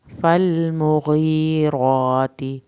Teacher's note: لام کو نہیں ہلانا، مغی، یا ساکن کو کھینچنا ہے، را کو پر کرنا ہے، راتی، کھڑی زبر کو لمبا کریں گے، تا کی زیر کو لمبا نہیں کریں گے۔